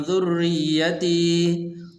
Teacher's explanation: فَأَتَمَّهُنَّ قَالَ إِنِّي جَاعِلُكَ لِلنَّاسِ إِمَامًا قَالَ وَمِن ذُرِّيَّتِي، ذُرِّيَّتِي یہاں پر ایک تو ذال پڑھنی ہے، زا نہیں پڑھنا، اور دوسرے را کے نیچے زیر ہے تو اس لیے اس کو باریک کر کے پڑھنا ہے. اسی طرح را کے اوپر شد بھی موجود ہے اور آگے یا ہے اس کے اوپر بھی شد موجود ہے، تو اس طرح پڑھیں گے.